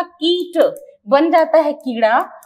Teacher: टमाटर का ट जो अड़ में बदलता है